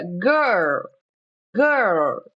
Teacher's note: Segundo, você tem que lembrar do R, que a língua vai lá para trás, G. E você tem que lembrar do L, que a língua dá uma entortadinha